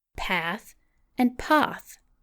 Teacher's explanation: the closed a of the north and the open a of the south